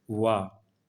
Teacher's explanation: फिर है दंतोष्ठ, यानी ऊपर के दांत और निचला होठ इनका उच्चारण स्थान है।